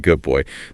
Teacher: Good boy can sound like good boy. The D assimilates to the B.